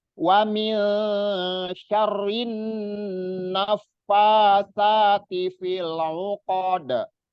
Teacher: Wa min syarrin, nun tasdid, nun ada tasdid itu namanya gunnah musaddadah. Jadi harus digunahkan, didengungkan dan ditahan 2 harokat, nggak boleh buru-buru. Huruf nun dan mim, 2 huruf itu masuk ke maudhi'ul khoisum namanya, masuk ke hidung, sengau.